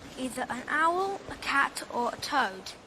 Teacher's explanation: the last item toad is realized in a falling tone